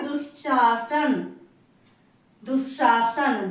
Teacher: दोनों में विसर्ग का आधा तालव्य सा बन रहा है